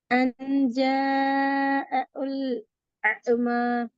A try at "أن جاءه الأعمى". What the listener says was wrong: நீங்க ஓதுற நேரத்துல உல் ஆமான்னு தான் ஓதுறீங்க. அதான் பிழை. உங்களோட ஓதல் தான் பிழை. நீங்க வாசிக்கிறது ஒன்று மாதிரி இருக்கிற, நீங்க உச்சரிக்கிறது ஒரு மாதிரி இருக்கிற, உங்களோட ஓதல் இன்னும் ஒரு ஸ்டைல்ல இருக்கிற, அது பிழை.